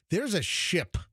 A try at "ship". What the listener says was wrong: pronounce that P, ship.